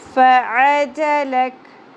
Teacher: آخر میں وقف کی صورت میں کاف کی زبر جزم میں بدل جائے گی اور کاف ساکن ہو جائے گا